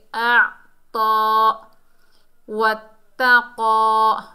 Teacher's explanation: ता मुशद्दद हर्फ है, मजबूती और जमाव से पढ़ा जाएगा। और क़ाफ जो है हुरूफ़े मुस्ताला में से है, मोटा अदा होगा।